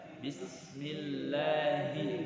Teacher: Bismillahi, di situ ha yang besar. Keluarnya di tenggorokan bagian bawah. Nah, jadi kalau tenggorokan kita ini di bagian bawah ini ada dua huruf, a dan ha.